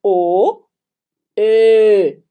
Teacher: você vai fazer a boca do o e vai pronunciar e né enquanto você tá com a boca formada no o Então